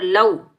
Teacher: یہ واو لین ہے، اس کو ہم بغیر کھنچے پڑھیں گے، نرمی سے ادا کریں گے